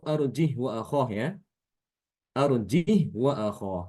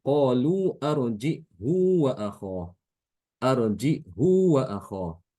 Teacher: Ibnu Katsir membacanya dengan menambahkan ada huruf hamzah ya huruf hamzah sukun setelah Jim kemudian huruf Hnya itu di didahkan serta di dikans Silah jadi